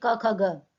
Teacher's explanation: ना तो दांत टच कर रहे हैं, ना तालु, ना मूर्धा, ना ओष्ठ, तो फिर क्या हो गया? कंठ। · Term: कंठ ध्वनि